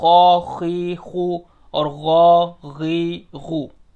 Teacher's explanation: सबसे पहले खा और गैन देख लें। खा और गैन ये दोनों हलक के शुरू के हिस्से से निकलते हैं जो मुंह की तरफ है